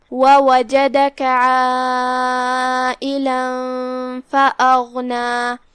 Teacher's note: حرف الغین کی بھی ادائیگی حلق کے اوپر والے حصے سے لہذا اس کا دھیان رہے اور وہ حروف التفخیم میں سے بھی ہے تو ہم اسے بھاری آواز میں پڑھیں گے.